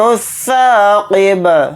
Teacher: قاف کو یہاں پر موٹا یعنی پر پڑھیں گے